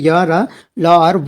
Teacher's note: इन व्यंजनों में श्वास का अवरोध जो है बहुत कम होता है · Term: अंतस्थ व्यंजन